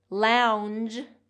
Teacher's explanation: Lounge, lounge has more of the voiced j sound. So the difference here is in the vowel and in the voiced and voiceless sound at the end.